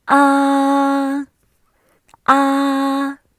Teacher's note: Each of the line is marked with numbers from 1 to 5, which can be treated as do, re, mi, so, la, from bass to treble, higher and higher. The first tone is high and flat.